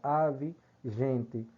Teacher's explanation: O O está com som de U, o E aí está com som de I, o outro E de gente também com som de I